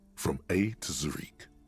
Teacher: very much emphasized like a syllable between the Z and the r